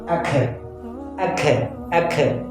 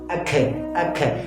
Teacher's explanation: اگر ہم قلقلہ کریں گے تو ہا کا اضافہ ہو جائے گا